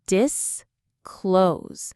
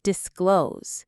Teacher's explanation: The stress is on the second part, disclose. It sounds exactly like the word close, as in please close the door, but with the prefix dis at the front.